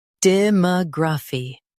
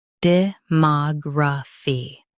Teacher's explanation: US stresses ma, UK stresses mog.